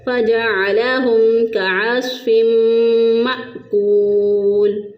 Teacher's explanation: تنوین کے بعد دیکھیں، نون ساکن اور نون تنوین کے بعد جب حروف یرملون میں سے میم آ جائے تو وہاں پر ادغام مع الگنہ ہوتا ہے، ادغام بھی کریں گے اور گنہ بھی کریں گے۔ تو فا کو میم کے ساتھ ملا کر اور 1 الف کے برابر گنہ کرتے ہوئے ہم نے اس کو ادا کیا